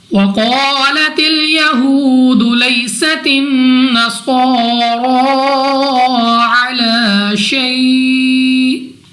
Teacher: قاف مستعلیہ میں سے ہے، موٹا پڑھیں گے منہ اور آواز کو کھول کر۔